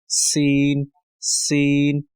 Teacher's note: है सीन भी वहीं से अदा होता है सीन सीन लेकिन इसमें थोड़ी सीटी वाली सिफत जो है वो रखेंगे